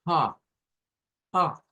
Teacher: la J es un sonido aspirado, es un sonido que no tiene vibración.